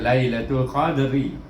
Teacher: ra baris di bawah, baca ri di situ, baca dengan nipis, iaitu ra nipis kalau baris bawah.